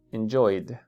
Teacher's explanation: es la d del inglés que hace que la punta de la lengua toque nuestra parte superior del paladar